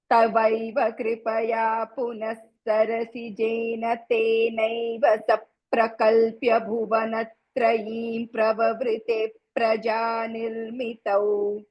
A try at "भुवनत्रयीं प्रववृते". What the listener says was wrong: ఇప్పుడు కొంచెం నేను I'm sad because you are not pronouncing that మకారా after భువనత్రయి. I don't know why. భువనత్రయీం ప్రవవృతే. You are suppose to close your lips.